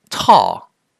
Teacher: now say the word tall you should feel a puff of air coming out this puff of air is called aspiration · This puff of air is called aspiration. The T in tall is an aspirated T.